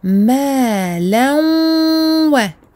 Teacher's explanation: On fait passer un premier waw par le nez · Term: idgham birunna